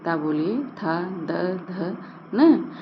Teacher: बिना दांत में स्पर्श किए इन वर्णों का उच्चारण ही नहीं हो सकता है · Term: दंत वर्ण